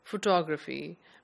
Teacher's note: The stress is on the second syllable, photography.